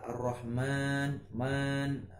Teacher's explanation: Itu sudah menunjukkan adalah hukumnya mat tabi'i, yang menunjukkan dia harus dibaca sebanyak 2 harokat atau 2 ketukan atau 1 alif. Jadi tidak boleh dibaca pendek.